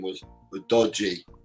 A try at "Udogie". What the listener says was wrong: Udogie. There's an EH also.